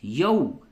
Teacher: वाव साकिन से पहले अगर जबर हो तो उस वाव को वाव लीन कहते हैं नरमी के साथ अदा करते हैं